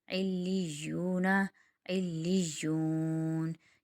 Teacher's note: وقف کی صورت میں مد عارض وقفی بنے گا کیونکہ یا واو مدہ بن رہا ہے، واو مدہ کے بعد نون ایک حرف آ رہا ہے جو وقف کی وجہ سے ساکن ہو رہا ہے، اس لیے اس کو وقف کی صورت میں 6 الف کی مقدار کھینچیں گے۔